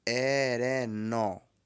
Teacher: Então, pronuncia-se erenon, porque o NA, além de ser uma vogal nasal, no idioma Yorubá ele tem som de ON.